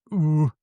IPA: u